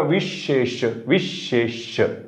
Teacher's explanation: श म्हणताना काय झालं जिभेच्या कडा उचलल्या